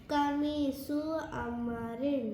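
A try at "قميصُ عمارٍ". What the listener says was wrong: रिन माशाल्लाह very nice बिल्कुल सही।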